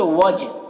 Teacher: یہاں پر جیم میں قلقلہ ہوگا